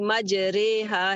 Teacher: امالہ ہوتا ہے قرآن میں صرف ایک ہی جگہ پہ، یہ پوری قرآن میں ایک ہی جگہ پہ را جو ہے اس کو رے کی ساؤنڈ میں پڑھا جاتا ہے. یا کو یا کی ساؤنڈ میں، جیسے ہم اردو میں پڑھتے ہیں نا، جیسے بے تے سے اور رے اردو میں پڑھتے ہیں، تو یہاں بھی رے جو ہے وہ یا کے ساتھ پڑھی جائے گی.